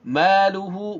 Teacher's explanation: ma dibaca panjang dua harokat, luhu. Nah, ini adalah mad silah qasirah ya.